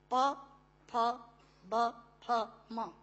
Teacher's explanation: प फ ब फ म दोनों होंठ मिलाकर बोले जा सकते हैं। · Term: ओष्ठांग